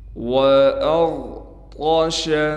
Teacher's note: رفع سمکها فسواها، وأغطش، حمزہ کو غین سے ملانا ہے، غین کو موٹا کر کے پڑھیں گے، طا بھی موٹی پڑھی جائے گی